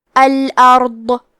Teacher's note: ضاد کی ادائیگی زبان کے کروٹ اور اوپر کے داڑھوں کی جڑ سے ہے. ضاد حروف تفخیم میں سے ہے، تو ہم ضاد کو بھاری آواز میں پڑھیں گے. · کلمت الارض میں حرف را پہ جزم ہے، یہاں را کا حکم ہے تفخیم، تو ہم حرف را کو موٹی آواز میں پڑھیں گے